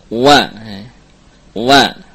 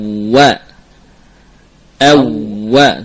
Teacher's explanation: Di antara kesalahan atau kekeliruan adalah pengucapan waw yang bukan dengan dua bibir, tapi mengkombinasikan antara bibir bawah dengan gigi seri, misalkan wa, wa, ini keliru.